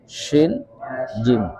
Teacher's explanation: rongga antara langit-langit dan lisan. Ya Shin naik dikit, jim nempel. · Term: huruf syajariyah